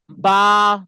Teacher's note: দুই ঠোট থেকে ভেজা অংশ থেকে উচ্চারিত হবে